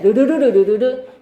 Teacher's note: 코를 올리자. 이응 혀 양옆으로 공기를 흘려보내